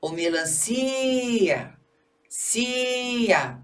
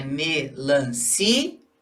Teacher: O si é a sílaba tônica.